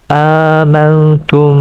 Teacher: Syafawi berlaku hukumnya apabila mim Sakinah bertemu dengan huruf ba maka mim Sakinah tersebut dibaca dengan Ikhfa serta dengung dengan kadar dua harakat